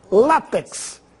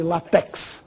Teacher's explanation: Essa palavra deve ser pronunciada com tonicidade na penúltima sílaba.